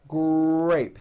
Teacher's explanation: the r sound is the strongest sound of the blend and your lips often come forward before you even say the word